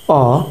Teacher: ফুঁ দেওয়ার মতো গোল হয়ে যাচ্ছে যেমন আমরা যদি উচ্চারণ করি অ যখন বলছি তখন আমাদের ঠোঁট পুরোপুরি গোল হয়ে যাচ্ছে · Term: বর্তুল স্বরধ্বনি